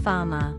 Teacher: The R at the end of words is also not pronounced and makes more of a schwa sound instead. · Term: Non-rhotic